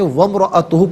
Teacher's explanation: ناظرین ملا کر پڑھنے کی صورت میں وامرأتہ پڑھیں گے، واو پر زبر، اسے میم ساکن کے ساتھ ملائیں گے، درمیان سے الف یعنی حمزہ کو حذف کیا جائے گا